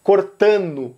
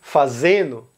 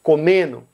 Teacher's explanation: a letra D do final, muitas vezes ela pode ser omitida para qualquer gerúndio em português